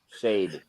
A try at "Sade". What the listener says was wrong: There's no H and there's no R in there.